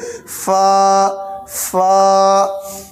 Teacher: ऊपर के दांत का किनारा ये नीचे तर हिस्से में लगाएंगे, होंठ के तर हिस्से में लगाएंगे, ऐसे कहेंगे फा, फा।